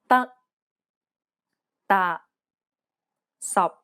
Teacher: the final p t and k are unreleased in cantonese this means that you must not release a burst of air when pronouncing this sound it's as though you're cutting the sound off